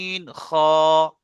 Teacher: হালাকের বা কণ্ঠনালীর শেষ ভাগ হতে উচ্চারিত হয়। শেষ ভাগ বলতে উপরের দিকের ভাগটা দেখতে পাচ্ছেন, এই উপরের দিকে যে ভাগটা আছে, উপরের দিকে উচ্চারণ জি জি।